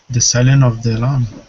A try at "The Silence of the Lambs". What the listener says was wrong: Almost. The Silence of the Lambs. You've got to have that silence, that S sound.